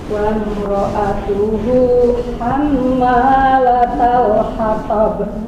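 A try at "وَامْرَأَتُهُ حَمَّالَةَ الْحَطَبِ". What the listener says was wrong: Sedikit Bu, kurang dengungnya.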